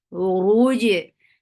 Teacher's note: jim will get qalqala.